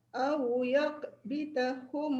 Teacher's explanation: awiyak bitahum tu tak dengung sebab dia izhar